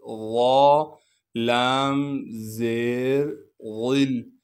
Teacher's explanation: لام پر تشدید ہونے کی وجہ سے تھوڑا سا ٹھہراؤ رکھیں گے اور لام پر اخفا یعنی غنہ کیا جائے گا۔